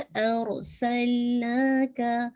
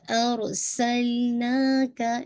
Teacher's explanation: अरसल और हैवी रखिएगा और सीन की विस्लिंग वाजे कीजिएगा